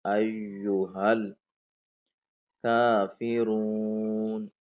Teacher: یا کے اوپر جو شد ہے اس کو ہم ظاہر کریں گے سختی کے ساتھ